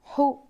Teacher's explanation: حلق کے بیچ کے حصے سے ہا ادا ہوتا ہے. یہ حروف حلقی میں سے ایک حرف ہے.